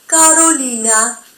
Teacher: El único caso en el cual la letra R se va a pronunciar igual que en español, suavemente, sería en el caso de que sea una sola R en medio de vocales, como por ejemplo en el nombre Carolina.